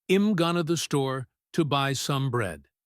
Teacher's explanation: In the fast version, I am going becomes im. · Going to becomes going to. The words to and by almost disappear.